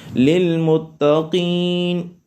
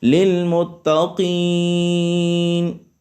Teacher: مد عارض کو 1 الف، 2 الف، 3 الف کے برابر کھینچ کے پڑھ سکتے ہیں